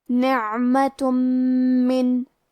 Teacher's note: کلمت من، میم حروف الادغام بغنہ میں سے ہے، اور ادغام کا معنی ہے حرف کو حرف میں داخل کرنا، تو ہم یہ تنوین کو میم میں ملا کے غنہ اور تشدید کے ساتھ ادا کریں گے